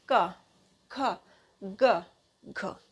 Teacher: जो का वर्ग होता है वो हमारा कंठ से आता है।